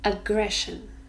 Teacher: three syllables ah gray shown here the Shh sound sure so three syllables and we stress the second one · So 3 syllables, and we stress the second one.